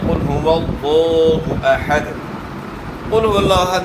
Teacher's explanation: اور لفظ اللہ کے نام کو موٹا بھی کرنا ہے، اور اس کے اوپر کھڑا زبر ہے، کھڑا زبر جو ہے نا اس کو کھینچنا ہے۔